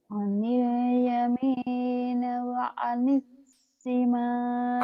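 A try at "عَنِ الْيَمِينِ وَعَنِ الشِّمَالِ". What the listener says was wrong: anil yamini. Ni-nya ketinggalan Kak.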